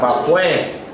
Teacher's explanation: De gente de Nicaragua la S no la usa mucho